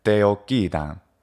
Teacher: The double C is a geminated consonant, and when you have two of the same consonant together in Latin, it is held for a longer period of time.